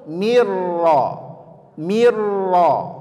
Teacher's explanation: lagi idgham namanya idgham Tam secara sempurna dia apa yang sempurna masuk ke huruf keduanya secara sempurna sehingga Huruf pertamanya benar-benar hilang